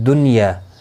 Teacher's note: پھر دنیا، یہاں پر نون ساکن کے بعد یرملون کا یا آیا ہے ایک ہی کلمے کے اندر، تو یہاں پر اظہار مطلق ہوگا، یعنی نون کو ظاہر کر کے پڑھیں گے. دنیا، یہاں پر اخفا نہیں ہوگا.